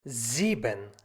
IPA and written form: ˈziːbən (sieben)